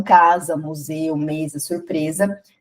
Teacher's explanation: o S, quando tiver entre vogais, ele vai ter som de Z.